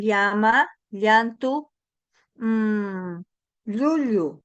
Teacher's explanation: es un sonido palatal que vamos a pegar nuestra lengua, el dorso, al paladar